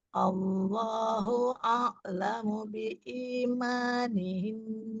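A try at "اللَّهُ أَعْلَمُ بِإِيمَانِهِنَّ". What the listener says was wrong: Huruf ainnya coba alirkan. Tawasud. Allahu a'lamu biimanihin.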